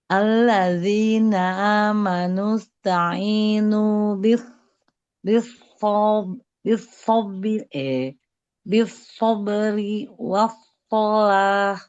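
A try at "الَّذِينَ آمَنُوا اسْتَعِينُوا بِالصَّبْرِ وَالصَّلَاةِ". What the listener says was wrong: Nah, belum ya, huruf shadnya belum.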